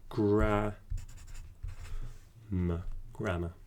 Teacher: but the sound at the end that vowel sound it's a it's a relaxed vowel and we actually call that a schwa sound